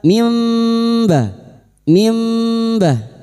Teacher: Bacaan iqlab membalik atau menukar. Membalik seperti bertemu mim. Namun siap membunyikan huruf ba dan mendengung selama tiga harakat.